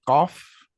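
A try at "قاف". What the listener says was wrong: QAF. I want to hear the F also. Cough. So that's a guttural also.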